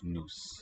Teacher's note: This NOS has a light, is tonically light, no stress on it, and so the vowel raises